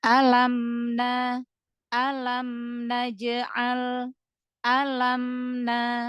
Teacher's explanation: ada huruf mim sukun bertemu dengan huruf nun. Berarti kan ini idhar syafawi, ya kan? Maka dialirkan.